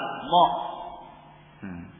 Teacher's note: letaknya di ujung lidahnya ditempelkan pada pangkal gigi seri yang atas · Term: satu makhraj